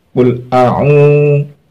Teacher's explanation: Ai-nya ditekan waktu mau mengucapkan ain biar bisa keluar ke khaisum.